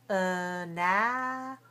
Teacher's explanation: we have four syllables and we say analysis, stressed on the second.